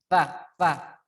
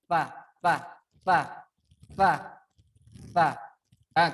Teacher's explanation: Jadi ujung lidah kita bertemu dengan gigi seri bagian atas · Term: huruf ta